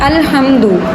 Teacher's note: اس کا جو مخرج ہے وہ ہے ہا، جس کو گلے کے اندر سے جو ہے وہ نکالتے ہیں، حلق کے اندر سے